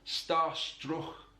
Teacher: This feature is uniquely Scouse. It's that fricative K sound.